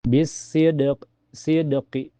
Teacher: Karena Alif-Lam bertemu dengan huruf matahari, yaitu Shad. Cara membacanya adalah dengan langsung masuk ke dalam Shad. Alif-Lam tidak diucapkan, dan tandanya adalah setelah Alif-Lam, terdapat huruf dengan shaddah, yang berada di atas Shad. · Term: Alif-Lam Ash-Shamsiyah